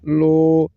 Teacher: لام کے اوپر جو پیش ہے اس کو کھینچ کر پڑھیں گے تاکہ واؤ ساکن کے بعد نکلے